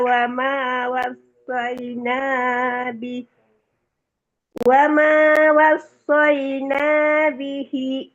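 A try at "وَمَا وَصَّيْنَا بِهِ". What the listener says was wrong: bihinya panjangnya sampai 4 harkat ya, itu terlalu dikit banget, baru 1 harkat. Wama wasaina, ulang dari situ lagi, bihinya dipanjangkan.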